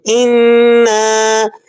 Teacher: سورہ کوثر، لفظ انا، اس کے ابتدا کے اندر آپ کو حمزہ نظر آ رہا ہے، انا، حمزہ کی آواز مضبوط ہوتی ہے اور ذرا صاف ستھری آواز ہوتی ہے، انا، کسی بھی طرح کا اس آواز میں کوئی بھاری پن نہیں ہوگا، اور اسی طرح اس آواز کے اندر آپ کو اتار چڑھاؤ بھی نہیں نظر آئے گا